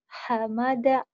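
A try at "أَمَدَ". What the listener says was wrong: Bukan ha ya, ini a. Amada. Iya, amada.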